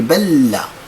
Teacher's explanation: لتسهيل النطق أقول بل، أضغم اللام في اللام فتصبح لاما واحدة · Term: إدغام ديال المتماثلين